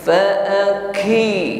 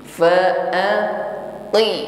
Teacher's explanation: kuat tekanan hurufnya, bersih tanpa nafas yang mengalir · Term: syiddah